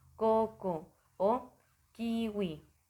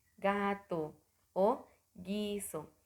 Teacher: actúa la lengua contra la zona móvil del paladar